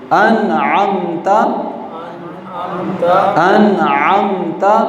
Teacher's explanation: یہاں پر غنہ نہیں ہوگا بلکہ اس کو جلدی سے ظاہر کر کے پڑھیں گے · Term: اظہار